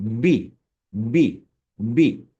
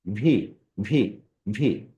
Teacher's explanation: যখন আমরা বি উচ্চারণ করব তখন হচ্ছে দুইটা লিপস থেকে এই উচ্চারণটা হবে। যেমন আমার লিপসের দিকে দেখেন বি বিবি দুইটা ঠোট একসাথে হচ্ছে।